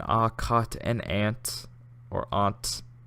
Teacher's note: I have the same vowel in ah, cot, and ant or aunt. It sounds like ain't.